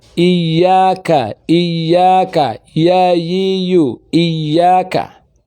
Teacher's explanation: Ya itu keluar dari tengah-tengah lisan. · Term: huruf ya